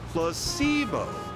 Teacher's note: The stress is on the middle syllable.